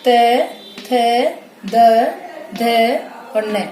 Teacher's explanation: और दंत्य व्यंजन कौन से हैं, जैसे ये वाले त वर्ग, मतलब जब हम बोलते हैं, इनका उच्चारण हम करते हैं तो जिह्वा जो है वो दांतों का जो ऊपरी वाला हिस्सा है, ऊपर वाले दांतों उनको स्पर्श करती है, तो ये हो गए दंत्य व्यंजन। मतलब दंत्य व्यंजन के उच्चारण के समय जो जिह्वा है वो हमारे ऊपर वाले दांतों को स्पर्श करती है,